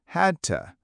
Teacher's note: Had to becomes had to with the d and t running together.